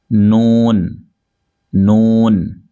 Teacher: नून का मखरज है जबान का किनारा और अनियाब से सनाया तक के दांतों की जड़ों से अदा होता है